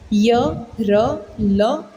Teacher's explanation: इनका उच्चारण स्वर और व्यंजन के मध्य का लगता है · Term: अंतस्थ व्यंजन